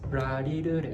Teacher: in japanese language we don't have l sound and r sound so l sound and r sound both become softer r it's very soft